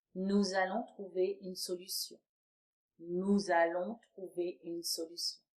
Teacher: Notice the liaison I did with nous and allons.